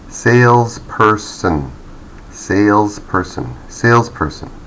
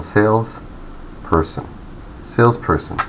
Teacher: So we give a high pitch or the loudest noise to the first syllable